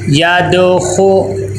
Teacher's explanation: خا کے اوپر پیش ہے، ہونٹ گول ہونے چاہیے اور خا کو موٹا کر کے پر کر کے پڑھنا ہے